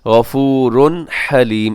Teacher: غفورن کے آخر میں تنوین ہے، تنوین کے بعد حلیم کے شروع میں ہا ہے، ہا حروف حلقی میں سے ہے تو یہاں پہ آپ اظہار کریں گے. غفورن حلیم ایسے تیزی سے پڑھ دیں گے، اس کو ایسے نہیں پڑھیں گے غفورن حلیم، تو یہاں غننے والا کام ہم نہیں کریں گے.